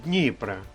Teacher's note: наголос на першому складі